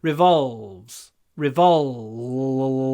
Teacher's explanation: Well, I like words with a v combination because you get this ulv sound. It's really deep in the throat.